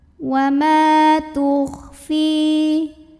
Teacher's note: mim yang fathah ini dipanjangkan 2 harokat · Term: mad tabi'i